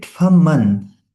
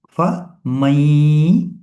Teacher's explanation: we will mix the sound of noon silent and ya, and we'll read it as gunna. Normally, we will read it faman, but we know that after noon silent, when there is ya, so we will do idgham.